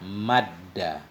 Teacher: Diidgham artinya dimasukkan, diidghamkan, dimasukkan akan dianya dal pertama dalam dal kedua